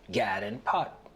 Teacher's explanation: The lot trap vowels are reversed for God and pat to sound like gad and pot.